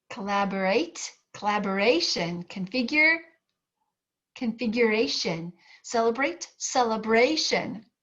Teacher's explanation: every time you add shun onto the end of a word it shifts the syllable stress to that syllable just before the syllable shun